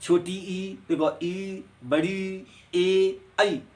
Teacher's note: अग्रस्वर वो होते हैं जिन्हें बोलने पर मुखार बिंदु का अगला हिस्सा खुलता है, जैसे छोटी ई, बड़ी ई, ए और आई।